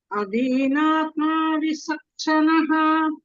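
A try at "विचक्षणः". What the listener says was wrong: It is not sa, sarpaha sa. It is charanam cha. Vichakshanaha. Adinatma vicha. You can see the akshara there, right? Vicha.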